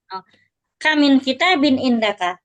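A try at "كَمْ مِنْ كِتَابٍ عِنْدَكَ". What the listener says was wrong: Tapi bukan. Nah, tapi ini bukan bertanya ya. Intonasinya beda. Berapa banyak kitab yang kamu miliki? intonasinya lagi marah biasanya.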